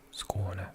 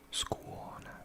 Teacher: Skåne, rather than just Skåne. So that's a diphthong with a w and the o.